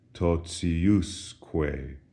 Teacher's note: Notice the accent shifts from the ti syllable to the us syllable, and as a result, the pronunciation of ti is no longer t, as in totius, but rather it softens. We have an S in between the T and the I